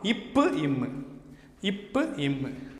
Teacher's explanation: மேலுதடும் கீழுதடும் பொருந்துவதால் தோன்றுகிறது